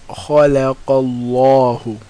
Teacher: And we know if it's fatha or dhamma, which are both on top, then Allah is full mouth or heavy. So it's pronounced khalaqallahu.